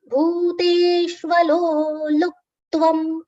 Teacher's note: Bhute, long sounds for bhu and te both.